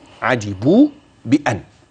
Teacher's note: هتمد أربع حركات عند الوصل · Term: مدا منفصلة